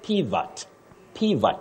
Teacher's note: The O takes the weak sound a.